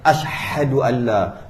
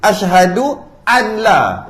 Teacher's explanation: Bila nun mati bertemu lam dengan ra, nun dah macam tak ada. Terus macam tak ada. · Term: Idgham bila gunnah